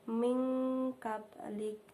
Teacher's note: menyamarkan bunyi nun sukun dengan huruf kaf, yaitu menjadi mingkabalik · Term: ikhfa hakiki